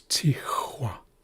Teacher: It should be pronounced with a lower sound, a deeper sound. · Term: X bar